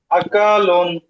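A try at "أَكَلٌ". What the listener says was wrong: আকা এটা টান হবে না, হ্যাঁ, সাথে সাথে আকালুন। টান হয়ে যায়, টান হবে না, আকালুন।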